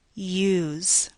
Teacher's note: We don't write a Y at all in the spelling, but we still produce the word as if it had one. We produce a sound that we leave out of the spelling.